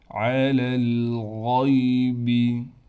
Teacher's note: لام کو لام سے ملائیں گے، یہ یا بھی نہیں پڑھی جائے گی، یہ الف کو بھی ہم ختم کر دیں گے، دونوں لام کو ایک ساتھ ملا دیں گے، غین کو موٹا کر کے پڑھیں گے